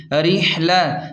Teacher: را زیر رح، لام زبر ل، را کو زیر کی وجہ سے باریک پڑھیں گے، ہا کو حلق کے درمیان سے صاف نکالیں گے